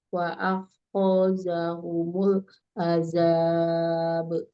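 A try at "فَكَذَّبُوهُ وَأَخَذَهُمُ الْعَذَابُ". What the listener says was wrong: Ulang dari fakazzabuhu. Zalnya nggak panjang ya? Fakazzabuhu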